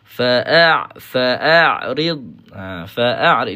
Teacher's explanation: Kalau bunyi dalam hidung tu bergetar, ha itu bermakna ada unsur ghunnah yang kita masukkan ke dalam a ke dalam a huruf ain kita. So kena perbaikilah, kena kontrol eh nak latih dia.